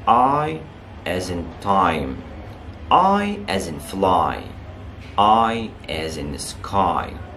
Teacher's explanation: In pronouncing the vowel sound I as in sky, fly, high, lie, and tie, the lips are opened but not rounded. · بنقفلها حبة صغيرين أو بنقفلها وإحنا رايحين ننطق الصوت اللي هو short E اللي موجود في الـ I. The tongue is relaxed and it moves from flat to high position.